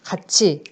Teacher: 받침 티읕이 뒤에 형식 형태소 모음 이를 만나서 가치가 되죠. 치읓이라는 국외음이 됩니다. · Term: 국외음화